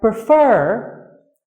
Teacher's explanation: the second syllable of the word prefer has the word stress